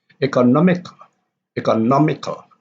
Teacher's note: Economical, economical, and the stress is on the third syllable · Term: stress shift